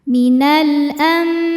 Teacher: Karena ada alif lam menghadapi huruf qamariah yaitu hamzah. Maka lam dibaca dengan jelas. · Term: alif lam qamariah